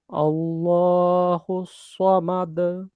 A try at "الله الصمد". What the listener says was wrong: কলকলার ধরনটা মা দে দে এরকম না হয় মাদ। আল্লাহু সামাদ।